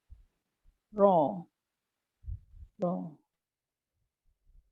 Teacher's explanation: Tawassut dia ada ekor suara tapi sekejap sangat.